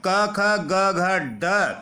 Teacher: क वर्ग के पांचों वर्ण क ख ग घ ड और ह तथा विसर्ग का उच्चारण स्थान कंठ से किया जाता है